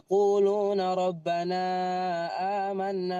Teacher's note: kalau berlanjut ya quluna rabbana amanna baru dibaca panjang tiga harakat